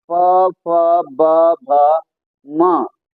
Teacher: अर्थात होठों की सहायता से दोनों होठों की सहायता से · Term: ओष वर्ण